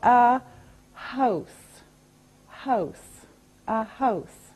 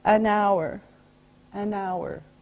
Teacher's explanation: H is a consonant, but sometimes we don't say the H.